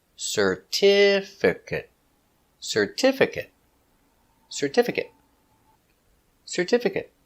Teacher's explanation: certificate certificate four syllables stress the second syllable certificate certificate certificate certificate he got a certificate of completion example